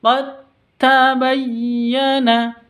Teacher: Berhubung dalnya bertemu dengan ta, maka langsung masuk ke ta. Namanya idgham.